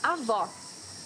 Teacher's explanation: you need to hear the sound of the last o in the syllable it should be an open o